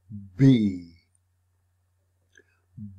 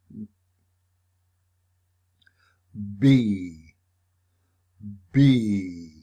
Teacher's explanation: B is made by bringing the lips together, stopping the airflow and sound, then releasing it all at once